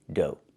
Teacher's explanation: Make the long O like no and go, and the GH is silent.